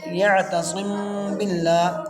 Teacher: صم کے میم پر اخفاء مع الغنہ ہوگا کیونکہ میم ساکن کے بعد با آیا ہے · لام کو باریک پڑھیں گے کیونکہ لفظ اللہ کے لام سے پہلے زیر ہے